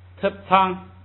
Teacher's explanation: 这个变化就是特本来是降调，在第一个音节呢，就是叫前不降，所以变成了平声